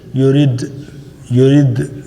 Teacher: تو یہ اس کا مخرج کہاں ہے، دا کا ہماری ٹیپ آف یور ٹنگ جہاں پہ گمز اور ٹیتھ سیپریٹ ہوتے ہیں نا وہاں دال کے لیے لگاتے ہیں، تو لگاتے ہی چھوڑ دینا ہے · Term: قلقلہ